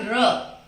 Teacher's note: अब र बोलते हैं तो हमारे स्वर में कंपन होता है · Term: प्रकंपित व्यंजन